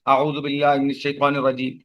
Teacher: واؤ کو کھینچنا چاہیے ایک الف کے برابر، کیونکہ یہ واؤ مدہ ہے